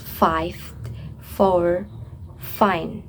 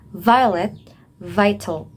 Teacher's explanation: Those fricatives are made using the lower lip and the upper teeth. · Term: labiodental fricative